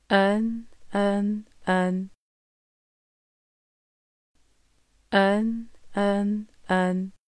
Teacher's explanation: صحیح ادائیگی سیکھنے کے لیے نون کے مخرج کی تصویر آپ کے سامنے ہے، یعنی زبان کے اگلے حصے کو اوپر کے سامنے والے 6 دانتوں کے مسوڑھوں سے مضبوطی سے لگاتے ہوئے کہیے گا